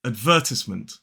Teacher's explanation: Then in the second syllable, in a modern British RP accent, we do not pronounce that R